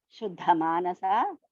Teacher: First Da is Alpaprana. The second one is Mahaprana.